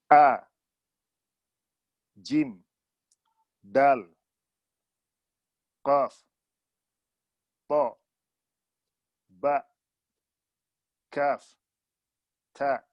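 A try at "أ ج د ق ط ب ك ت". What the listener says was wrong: Oke, alhamdulillah.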